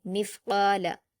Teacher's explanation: मीम को सा से मिलाकर पढ़ेंगे और सा को भी कलकला नहीं करेंगे। काफ पर अलिफ मद्दा है। दो हरकात खींचकर पुर पढ़ेंगे।